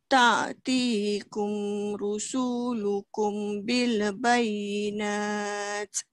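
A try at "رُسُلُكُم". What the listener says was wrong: Uh, rusul dia cepat. Ta'tikum rusulukum bil bayinat. Ah, tu awak terpanjang su dia.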